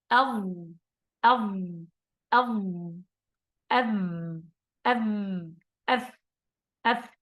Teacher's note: الضاء لا بد أن يخرج اللسان هكذا، لا تقول الضاء بدون أن تخرج اللسان، لا، ستقول الظاء وهذا خطأ، أو الزاء فتغير الحرف، أو الساء بدل الثاء، هذا خطأ. عندنا 3 أحرف مخرجها هو طرف اللسان مع طرف الثنايا العليا، يعني السنتين في الأعلى